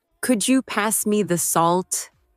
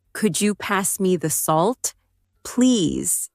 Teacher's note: my voice rises on. Could you and falls gently at the end